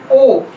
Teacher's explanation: 6th है हमारा ओ, ये ओ की छोटी साउंड है, back vowel just about open position and it is rounded. देखिए अब ओ बोलते हुए हमारे लिप्स की पोजीशन राउंडेड है, तो this is back vowel just about open position and it is rounded vowel.